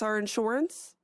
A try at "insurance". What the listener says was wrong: insurance. It's a UR, not an OR. Insurance, not insurance. But I guess depending on where you're from, I suppose the pronunciation could change a bit. No.